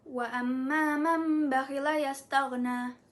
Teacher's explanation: nun sukun atau tanwin bertemu dengan huruf ba, maka bunyinya berubah seperti mim dan dibaca dengung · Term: iqlab